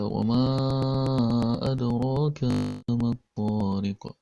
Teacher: Pada kata wama, ma-nya itu dipanjangkan juga sepanjang 5 harokat karena hukumnya adalah hukum mad jaiz munfasil, yaitu mad asli bertemu dengan huruf hamzah dalam kata yang berbeda.